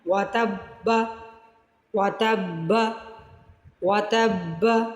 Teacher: ایک ساکن حرف کو متحرک حرف سے جب ہم نے ملایا ہے تو ہمیں یہ با مشدد حاصل ہوا ہے